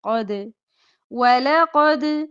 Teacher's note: دال پر جب جزم آئے تو کلکلا کرتے ہیں، یعنی کہ ہلا کے پڑھتے ہیں، جھٹکا دے کر